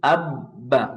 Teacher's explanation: যখন আপনি আব বলছেন, দেখেন অটো আপনার আওয়াজটা বন্ধ হয়ে যাচ্ছে। আব্বা। আপনি চাইলেও আব্বা এরকম আওয়াজ চালু রাখতে পারবেন না, সম্ভব না। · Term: আওয়াজ বন্ধ